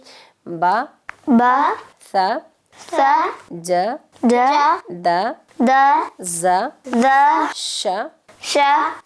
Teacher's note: جی، آپ نے آواز کو بڑا نہیں کرنا، میں آپ کو بتا چکی ہوں. با کی زبر، با زبر جو ہے وہ زبر کی آواز جو ہے وہ چھوٹی ہے، اس کو چھوٹی آواز کی طرح پڑھیں گے، زیادہ کھینچیں گے نہیں، بڑی آواز نہیں کریں گے اس کو.